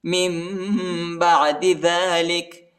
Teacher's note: نون کی آواز نہیں نکالنا، میم کی آواز نکالنا ہے. میم نون ساکن کے بعد با آیا ہے.